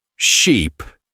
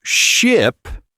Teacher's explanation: Sheep, with that long E sound, are the fluffy animals, while ship, with a shorter sound, is the boat they traveled on.